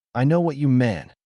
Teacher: Vocal fry happens when air flow decreases, but you keep trying to speak. The vocal cords don't vibrate cleanly. They flutter irregularly and the sound reads as weakness.